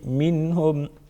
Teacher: نون ساکن کا اظہار ہوگا کیونکہ آگے حروف حلقیوں میں سے ہاں ہے